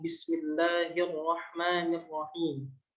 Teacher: Jadi lamnya nggak dibaca, langsung dibaca ro yang musyaddad gitu. Kemudian hamzah wasalnya juga nggak dibaca, kan ada a-nya Ar-Rahman, karena itu berada pada tengah-tengah kalimat atau tengah-tengah kata, tengah-tengah kalimat. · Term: lam asyamsiyah